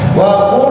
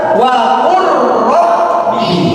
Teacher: Langsung lamnya hilang masuk ke dalam huruf ro.